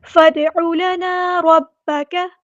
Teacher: را ہمارا heavy letter ہے، با کی شد کو اچھے سے واضح ادا کرنا ہے جماؤں کے ساتھ، ربک، کاف ہمارا لائٹ لیٹر ہے، کافی زبر · عین کو وسطی حلق یعنی میڈل تھروٹ سے ادا کرنا ہے